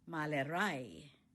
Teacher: the stress is on the last syllable